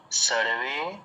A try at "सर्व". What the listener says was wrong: সর্ব সর্ব, ওটা একার নেই, দন্ত স